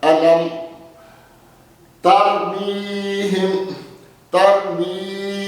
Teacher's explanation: الم ترمیہم، ترمیہم، یعنی جب میم ساکنہ آئی تو اس میں اخفا کیا، میم کو اس کے مخرج میں چھپا کر پڑھا، آواز ناک کے بانسے میں ہلکی سی گئی، لیکن غنہ کرتے ہوئے آواز کا بانسے کے اندر جانا انتہائی ضروری ہے۔